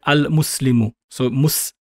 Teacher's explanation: being applied so i'll put here a sukun mus okay so there is no vowel being applied there's no uh or e sound being applied